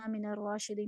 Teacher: من الراشدین میں را کو پر پڑھنا ہے